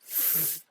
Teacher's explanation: you are forcing the air to go in between your upper teeth and your bottom, your lower lip. And so that's a narrow passage. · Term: fricative sounds